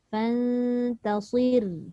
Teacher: Ni hati-hati sebab ta nipis, sad tebal, ra nipis balik